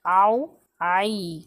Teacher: आइन हुरूफ़े बस हलक से निकलता है, हुरूफ़े हलक़ी है।